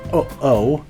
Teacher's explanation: you have to put a glottal stop in between the words to stop it just becoming oh-oh